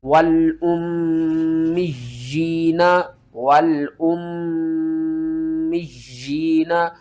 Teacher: میم مشدد کے اوپر آپ نے غنہ کرنا ہے اور یا کو سختی کے ساتھ پڑھنا ہے، ایک مرتبہ میم کے ساتھ ملانا ہے اور دوسری مرتبہ یا کو نیچے کی طرف کھینچنا ہے۔